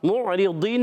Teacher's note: معرضین میں یہاں پر میم کو عین سے ملائیں گے, میم پر پیش ہونٹ گول ہو جائیں گے. عین کے ادائیگی الگ کے درمیان والے حصے سے.